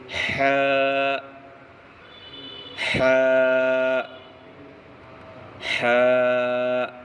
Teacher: ح کا مخرج حلق کا بیچ والا حصہ حلق کے بیچ والے حصہ سے ح ادا ہوتا ہے